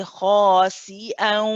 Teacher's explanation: as we're sending the sound through the nose, we're pronouncing the wow at the same time